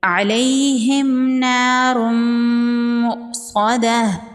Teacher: یا لین ہے، اس کو نرمی سے پڑھیں گے اور جلدی پڑھیں گے۔ · میم ساکن کے بعد نون ہے، یہاں پر اظہار شفوی کا قاعدہ ہوگا، میم کو ظاہر کر کے پڑھیں گے، میم پر غنہ نہیں کریں گے۔ · تنوین کے بعد حروف یرملون میں سے میم ہے، یہاں پر ادغام ہوگا مع الغنہ۔ واو کے اوپر حمزہ ہے اور حمزہ ساکن ہے، حمزہ ساکن کو جھٹکے سے پڑھیں گے۔ صاد حروف مستعلیہ میں سے ہے، صاد کو پر پڑھیں گے، وقف کی صورت میں گول تا کو ہا ساکن میں بدل دیں گے۔